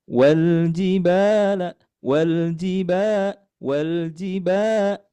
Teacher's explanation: Ah, di ayat keet7uh ini untuk nadanya sama seperti ayat ke ee enam. Jadi, kita menggunakan nada ee rendah mendatar.